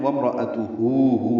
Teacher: ملانے کی صورت میں وامراتو ہو الٹا پیش ہے، 2 حرکات لمبا کریں گے، اقصی حلق سے ہا ادا ہوگا